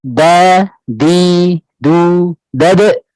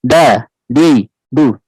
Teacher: Ya, berbeda huruf dal. Dia turunnya pangkal lidah tipis, ya, juga infitah, ya.